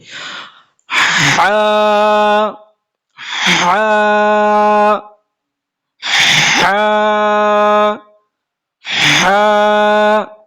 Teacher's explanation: এটা হবে গাঢ় করে উচ্চারণ, হলকের মধ্যখান, গলার মধ্যখান, কণ্ঠনালীর মাঝখান থেকে।